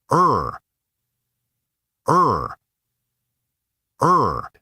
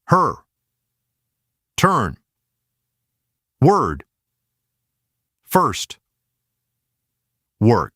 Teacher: Do not open the mouth too much. Start in the center and go straight into /r/. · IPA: /ʌr/